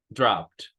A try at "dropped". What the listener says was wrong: No, la E no la pronunciamos. Dropped.